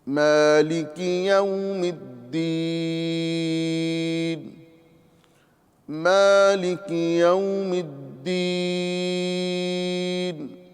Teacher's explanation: میم پر کھڑی حرکت ہے، اسے ایک الف کے برابر کھینچ کر پڑھیں گے۔ لام اور کاف پر حرکت جو بغیر کھینچے بغیر جھٹکا دیے معروف پڑھنا ہے۔